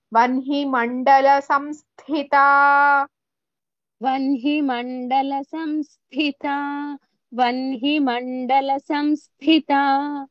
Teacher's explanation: That tha with sa is mahaprana.